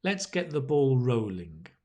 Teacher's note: that stress is on the rolling